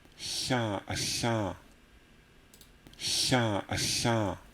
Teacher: In this register, there is a lateral palatal spirant that's introduced into every single word.